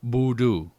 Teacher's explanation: the extended UU underlined is held slightly longer than the one U underlined, which is pronounced quickly, but they both make the oo sound.